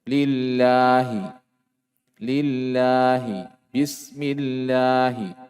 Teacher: Sebelum lafaz Allah, lafaz jalalah ada kasra. Maka lafaz jalalahnya dibaca tipis. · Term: at-tarqiq